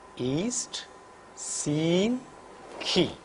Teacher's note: During the articulation of this vowel, front of the tongue is raised to a position almost near close. The lips are unrounded.